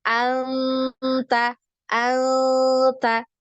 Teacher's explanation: didekatkan ke makhrajnya huruf ta ya ketika diikhfa ya anta anta ya tidak sampai menempel